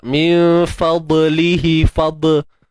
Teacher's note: huruf dad yang sukun perlu ditebalkan tanpa lantunan